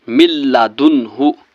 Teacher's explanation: مل دن، ہا پیش ہو، مل دن ہو۔ یہاں پر دیکھیے نون ساکن ہے اس کے بعد ہا ہے، ہا حرف حلقی ہے، حلق سے نکلتا ہے، تو اس لیے یہاں پر نون کو ظاہر کرنا ہے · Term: اظہار